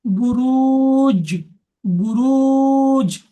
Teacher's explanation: জিমকে কলগলা করে ডান দিকের অক্ষরের সাথে মিলিয়ে পড়তে হচ্ছে